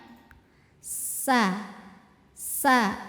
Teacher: Kemudian karena sinnya ada tasydid, kita tempel langsung, kita tekan ke sin. Sin ini tempat keluarnya ujung lidah, ditempel ke dinding gigi seri bawah. Gigi seri bawah yang tengah, bagian dalamnya.